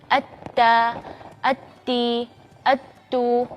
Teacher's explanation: Tapi apa yang membedakan huruf ta yaitu sifat-sifatnya, yaitu diantaranya sifat yang istimewa di huruf ta itu adalah sifat berdesis